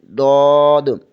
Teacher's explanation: زبان کی بائیں کروٹ بائیں دانتوں کے مسوڑوں سے لگے تو ضاد ادا ہوتا ہے